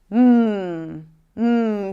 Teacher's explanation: So the air is stopped in the lips but this is a nasal stop. So I stop the air here and the air comes out through the nose.